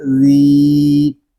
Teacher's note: انل، لام زبر لا، ان اللہ، ذال یا زیر ذی، ذال کو ہم ایک الف تک کھینچ کر پڑھیں گے کیونکہ یہاں پہ یا مدہ ہو رہا ہے۔ یا مدہ اس لیے ہو رہا ہے کہ یا ساکن سے پہلے زیر آ گیا ہے۔